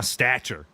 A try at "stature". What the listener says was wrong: It sounds like you're saying statue in like a really southern voice.